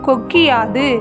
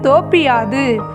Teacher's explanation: குற்றியல் உகரத்தில் உள்ள உகரம் இகரமாக மாறும். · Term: குற்றியல் இகரம்